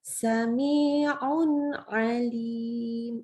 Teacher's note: Dia huruf nunnya kita nggak baca ditambahkan dengung, gitu ya. Huruf nun sendiri huruf gunnah, jadi harus diingat juga bahwa walaupun disebut baca jelas, sifat bunyi nunnya yang ada tawasud juga ya, kayak huruf ain, ini harus jelas juga. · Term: idhar haki